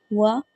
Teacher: جب ہم اس کو ہجے میں پڑھیں گے تو ہونٹوں کو گول کر کے کھولیں گے وا نہیں پڑھیں گے وا پڑھیں گے ٹھیک ہے واو زبر